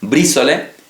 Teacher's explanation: la aparición de una R epéntica, es decir, el sonido de una R en mitad de la palabra